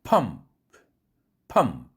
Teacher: 뒤에 있는 프는 해당 없기 때문에 아무 밑줄도 걷지 않았습니다. 뒤에 프는 바로 weakly aspirated 하는 프죠. 기음이 덜 쏟아져 나오죠.